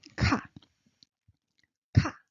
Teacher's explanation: Rising burst of air